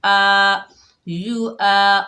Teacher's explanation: हमज़ा के ऊपर ज़बर, आगे الف خالی، یہ الف مدہ ہے، ایک الف کی مقدار کھینچ کر پڑھیں گے